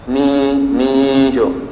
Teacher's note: nun sukun dengan jim tidak langsung ditempelkan di makhraj ya